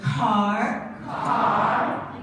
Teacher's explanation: the k sound in English, when it comes at the beginning of a word, is highly aspirated. Means a big puff of air.